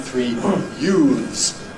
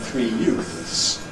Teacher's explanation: if you ask me what the plural of ‘youth’ /juːθ/ is, ‘three young men, three youths /juːðz/’, I would say, with the voiced.